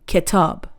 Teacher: Book would be kitab, stress is on tab.